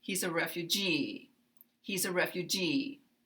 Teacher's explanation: when it's on the last syllable we will continue with our voice lower and come up here and glide down